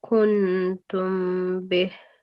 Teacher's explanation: the sound of Noon, it has to be concealed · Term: Ikhfa